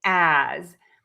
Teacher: this word is spelled with an S, but we actually use the letter Z sound.